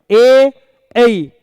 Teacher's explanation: ए और ए के उच्चारण में कंठ और तालु दोनों का उपयोग किया जाता है, यानी जो है आवाज है वो दोनों जगह से आती है। · देखिए कंठ तालव्य, ए ऐ, कंठ का यूज भी हुआ और जीभ का पिछला भाग तालु पर लगा